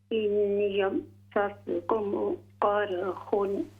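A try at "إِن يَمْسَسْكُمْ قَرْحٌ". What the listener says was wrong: یہاں غنہ کریں، یمسسکم،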